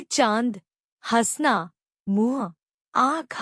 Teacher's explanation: अनुनासिक इसे चंद्रबिंदु कहा जाता है। यह नाक तथा मुख की सहायता से उच्चारित किए जाते हैं।